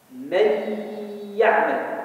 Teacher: Donc le noun, il a disparu. Il est entré dans le ya. Pour reconnaître qu'il y a quelque chose qui s'est passé dans le ya, il y a cette accentuation sur le ya. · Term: idgham